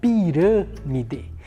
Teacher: A sílaba rã, ela é uma sílaba mais fechada. Então, quando o timbre da vogal é mais fechado, eu utilizo o acento circunflexo.